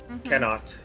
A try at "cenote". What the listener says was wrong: The E is not silent.